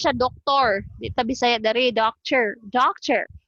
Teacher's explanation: so it's like there's no vowel between t and r so we use the schwa